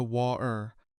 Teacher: that T often gets swallowed entirely, deep in the back of the throat , turning better into something closer to bayer, and water into